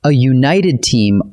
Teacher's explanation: A united team also takes a, because united starts with a Y sound, like you.